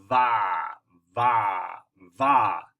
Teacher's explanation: What you did without thinking about it is you kind of, instead of putting your lips together, you kind of went teeth to lips, and you made a teeny vibration. It's a fricative, I believe is the word, a teeny vibration.